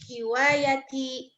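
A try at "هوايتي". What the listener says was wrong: Hiwayati, salah. Ya-nya panjang. Hiwayati.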